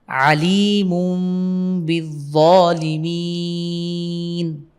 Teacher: এখানে তানবিনের পরে বা এসেছে আমরা এই তানবিনটাকে মিম দ্বারা পরিবর্তন করে পড়ব আলিমু বিলিমিন বিবাকে ধরবে বাজ বিলাম জবর আলিফ জবর বিলিমিন মিলিয়ে